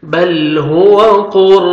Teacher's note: را ساکن سے پہلے پیش ہے تو آپ نے را کو پر کرنا ہے